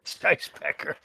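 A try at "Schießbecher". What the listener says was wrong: the word Scheissbecker. Do you see how it's SCHIE? language, IE pronounce the E. If it's EI, you pronounce the I. Well, Scheisse and Schieße are two different things, but that's all I'll say.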